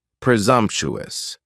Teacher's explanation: presumptuous has four syllables and the stress is on that second syllable and the S almost sounds a little more like a zed